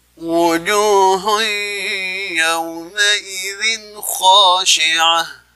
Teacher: ada tanwin ma'rifiyah idgham bi gunnah. Kemudian cara membacanya adalah memasukkan ke rongga hidung